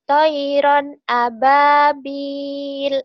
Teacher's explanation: di sini toiron, ronnya di situ ithar, tidak boleh ditahan